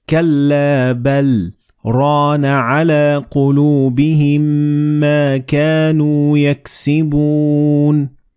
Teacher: you're going to stop very momentarily for like half a second and then continue reading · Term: very short pause